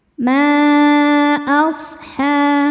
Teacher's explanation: Mad tabi'inya alif didahului fathah pada kata ma, sedangkan hamzahnya a pada kata ashabu. Maka mimnya panjang, boleh 4 boleh 5 harokat. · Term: mad jaiz munfasil